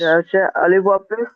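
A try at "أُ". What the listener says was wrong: আলিফ নয়, আলিফ হবে না ভাই।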